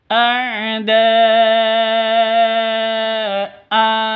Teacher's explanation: khusus Ali tanwin an ya atau fathatain maka hamzahnya berubah menjadi fathah panjang